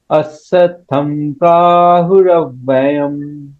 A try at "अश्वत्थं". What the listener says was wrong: ये ये जो है ना, ये बंगाली उच्चारण नहीं करना है। अश्वत्थम ने, अश्व अश्व अश्व, नॉट स, अश्व अश्व। शाहमृग का श। शाहमृग या अमित शाह। हाँ अश्व अश्व, हाँ हाँ अश्व।